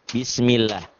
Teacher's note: Lafaz Allah dibaca tipis berbunyi A, karena sebelumnya berbaris di bawah atau kasroh.